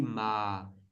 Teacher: it sounds pretty much stable and in the end there is kind of a bit of lowering down of the tone. You can also feel it in the throat. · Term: middle tone